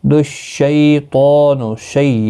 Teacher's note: یالین ہے، تھوڑا نرمی کے ساتھ کھینچ کر ادا کریں گے۔